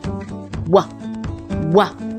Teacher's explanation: a glide where both lips are together and we pull them apart